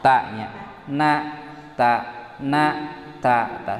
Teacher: Tina tungtung letah. Ngan pedah nun mah beulah luhur saeutik. Ari th dal ta mah beula handap saeutik.